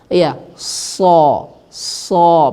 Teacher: Istia Istia itu adalah irtifa aqs lisan terangkatnya pangkal lidah jadi ketika Shad kita keluarkan maka pangkal lidah kita terangkat otomatis